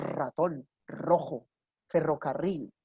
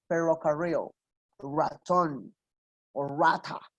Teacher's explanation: ¿Listo? La lengua no pega en el paladar duro, sino que pega en el paladar blando, ahí atrás. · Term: La R en inglés